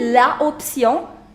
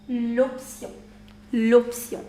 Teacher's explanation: since there is a clash of two vowels, we say l'option. L'option.